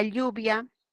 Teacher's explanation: Y la L es una lateral palatal